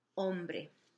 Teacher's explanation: H's in Spanish at the beginning are silent, the H's are silent, so you wouldn't pronounce it, you could just start with the O